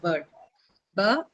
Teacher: R shouldn't be pronounced at all